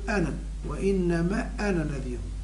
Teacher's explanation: كذلك للتذكير ضمير أنا هنا أنا علماء الضبط وضعوا فوقه صفر مستطيل دلالة على أن هذا الألف يمد وقفا ويسقط درجا أي وصلا. وإنما أنا في الاختبار أنا ترجع الألف وفي الوصل تحفظ تقول أنا وإنما أنا نذير.